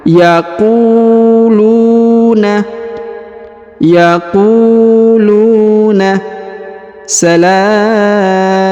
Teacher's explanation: Yaqulu ya, huruf ku yang ini perhatikan di depannya terdapat waw sukun maka dipanjangkan 2 harokat ya pada huruf ku. Kemudian huruf lu dipanjangkan juga 2 harokat karena di depannya terdapat waw sukun